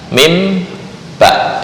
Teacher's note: Mim ba, itu yang dua bibir murni.